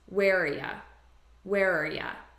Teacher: So what I'm doing is I'm taking just the R sound and I'm reducing this to ya, which is a very common reduction. And I'm just combining these as one word.